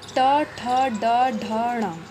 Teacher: मूर्धा जो होती है उसमें हम जैसे टावर्ग को बोलते हैं तो ट ठ ड ढ ण, इन्हें बोलते समय हमारी जीभ झटके के साथ नीचे आती है।